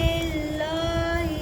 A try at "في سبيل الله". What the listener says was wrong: नहीं लिल मोटा नहीं पढ़ना लफ्ज़ अल्लाह का लाम है ना इससे पहले ज़ेर है في سبيل الله